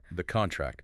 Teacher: If you say contract with stress on the first syllable, it's a noun